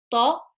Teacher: tip of the tongue, touching the gums of the upper front teeth and heavy